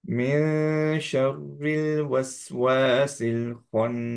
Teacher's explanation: শিনের মতো করে নুনটা টাং স্ট্রাকচারটা রাখবো। জাস্ট হচ্ছে আহ টাংটা শিনের মাখরাজে টাচ করব না, এইভাবে নুনটা পারফেক্টলি বলতে পারবো আমরা।